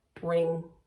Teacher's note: then our last sound here is that ng sound and it's that n sound but it's in the back of our throat